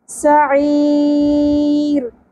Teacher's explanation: ہم ایک الف کے برابر نہیں کھینچیں گے بلکہ 3 الف کے برابر کھینچیں گے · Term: مد عارض وقفی